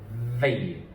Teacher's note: Remember, similar to the F sound, my teeth are coming to my bottom lip